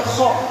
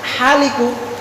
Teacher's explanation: Khaliqu itu pakai kha. Kalau salah sedikit bergeser ke makhraj haliku, itu haliku artinya tukang cukur.